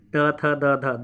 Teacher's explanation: दोनों दांत के बीच में जीभ आएगी बार बार आपकी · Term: तवर्ग